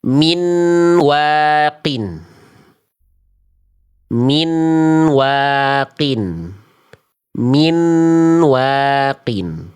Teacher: ini bacaan yang salah karena nun sukunnya masih dibaca jelas · Suara dari konsonan an atau nun atau tanwin an, in, un, an-nya itu masih terdengar jelas.